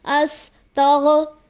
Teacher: غین کو اکثر پڑھنے میں ہلا دیا جاتا ہے، مطلب حرف قلقلہ بنا دیا جاتا ہے